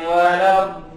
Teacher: Cara membaca huruf dad itu sisi lidah menempel pada gigi geraham dengan ada penekanan karena bertasydid.